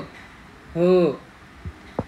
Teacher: you will feel something in your throat or kantha, so it is h is kanthya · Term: कंठ्यः